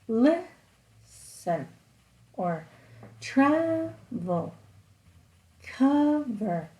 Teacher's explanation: You can see that the first part of the word, it's kind of louder and longer. That means it has stress.